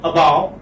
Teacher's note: So this is schwa sound, which is coming in the beginning. Now this, you know, this syllable here, you have two syllables.